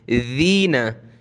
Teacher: ज़ाल पे ज़बान निकालेंगे थोड़ी सी